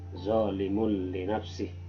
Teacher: Yang ketiga bacaan idgham bi gunnah, dimasukkan tanwin ini ke dalam lam